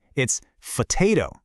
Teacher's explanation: The P gets its puff of air, and so does the T.